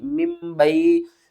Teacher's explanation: بعد اگر با آ جائے تو ہم نے کیا کرنا ہے، تنوین کی آواز اور نون کی آواز کو میم کی آواز میں بدل کر پڑھنا ہے